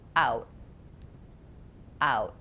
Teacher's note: My tongue goes up to my alveolar ridge. That's the bumpy spot behind my teeth, but it doesn't release, and I don't let any air out. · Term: stopped T